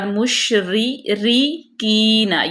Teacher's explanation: یہاں پہ را جو ہے وہ باریک پڑھی جائے گی کیونکہ را مکسور ہے ، کین کی، اس کو لمبا کریں گے، یا مدہ، این